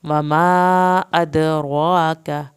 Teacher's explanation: وما کو پورا کھینچنا ہے، دال کا قلقلہ ہوگا